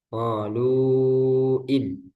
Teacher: tapi karena bertemu hamzah dia berubah yang asalnya dua harakat Jadi empat atau lima harakat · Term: mad jaiz munfasil